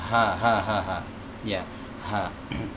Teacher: Huruf H keluar dari tenggorokan bawah